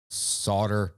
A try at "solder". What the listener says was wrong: Are you pronouncing the L? You're just kind of barely like, I'm just picking up a tiny bit of that silent L in there. Solder.